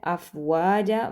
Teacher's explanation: افواجا میں واو کے اوپر زبر ہے، آگے الف مدہ ہے، افواجا، واو کو لمبا کریں گے۔ جا کے اوپر 2 زبر ہیں لیکن یہاں پر ہم وقف کر رہے ہیں، تو ہم نے جو 2 زبر کا رول پڑھا تھا وہ ڈیفرنٹ تھا، وہ یہ تھا کہ ہم 2 زبر کو ختم کر کے ایک زبر پڑھتے ہیں الف مدہ کے ساتھ، ٹھیک ہے۔